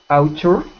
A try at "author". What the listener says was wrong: So we pronounce that not ow, even though it's A and U, we pronounce it like aw. Author. Author. Author. With your tongue out of your teeth like this.